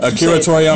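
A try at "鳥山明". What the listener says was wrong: You say it like it's an American name.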